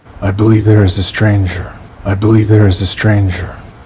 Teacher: At the very end of the statement, you'll hear a downwards flow of intonation.